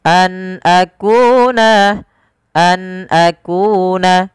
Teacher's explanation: Suara nunnya diperjelas karena dia ada bacaan berupa izhar halqi. Nun ketemu dengan hamzah dijelaskan suara nunnya an akuna, an akuna, tidak ada penahanan an akuna, tidak, tapi an akuna.